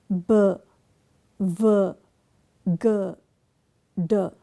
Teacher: So, we call them voiced consonants. The sounds where the vocal cords vibrate are b v g d